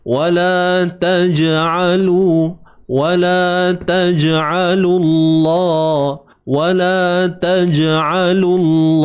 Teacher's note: Lantunan, qalqalah, sughra, lantunan yang kecil sekali, yang lemah.